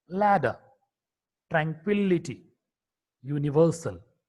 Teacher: L is a voiced alveolar lateral consonant.